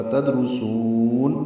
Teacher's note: تدرسون، دال ساکن پہ قلقلہ ہے، روپر ہے، سین کو باریک پڑھتے ہوئے لمبا کریں گے اور نون ساکن پہ اظہار ہوگا۔